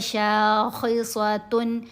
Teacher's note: شین کے اوپر زبر، ساتھ الف، الف حرف مدہ، اس وجہ سے ہم نے شین کو لمبا کیا، خا کے نیچے زیر، خا کو بھی موٹا پڑھنا ہے، صاد کو بھی موٹا پڑھنا ہے، دونوں حروف مستعلیہ میں ہیں۔